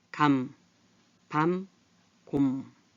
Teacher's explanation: 입술을 붙이고 나는 소리인데 입술을 딱 붙이니까 소리가 이 코로 이렇게 울리면서 나올 수밖에 없어요. 그래서 비음 또는 울림소리 이렇게 말해요.